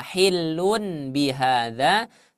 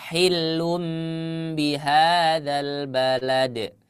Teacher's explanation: huruf yang seharusnya dibaca Nun itu digantikan ke huruf Mim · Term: iqlab